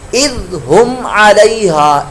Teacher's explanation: اذ یہ زا کی آواز نہ نکلے، ذال